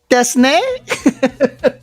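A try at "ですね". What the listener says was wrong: It sounds like it's a question.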